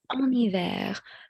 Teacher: So we drag the N to the next word, en hiver. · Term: liaison